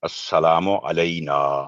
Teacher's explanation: नून पर फतह है, जबर है, और आगे अलिफ है। 2 सेकंड आवाज लंबी करके पढ़ेंगे